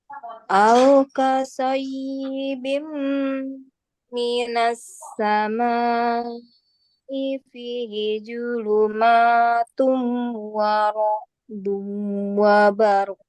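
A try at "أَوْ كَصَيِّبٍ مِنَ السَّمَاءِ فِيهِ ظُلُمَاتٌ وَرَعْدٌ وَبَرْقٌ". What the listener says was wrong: Nah, itu wakaf ya, berhenti, maka harus terdengar qalqalah. Saya ulangi, harus terdengar qalqalah. Karena qaf huruf qalqalah, huruf qalqalah. Ya, cara bacanya au qasayyibim minas samai fihi dhulumatun wa ra'dun wa barq. Ya, karena kita berhenti di wa barq dan qaf huruf qalqalah, maka harus terdengar pantulan suara.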